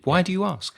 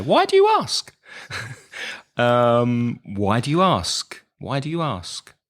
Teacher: your intonation was interesting you went very high